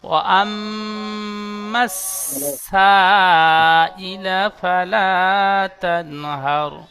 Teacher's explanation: সিন, সিটি মারার মতন আওয়াজ হবে